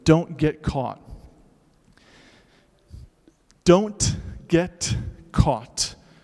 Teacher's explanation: those t's are typically unaspirated at the end of of the word or of a syllable they're not just unaspirated they're kind of muted they're not silent but if you pronounce them it sounds like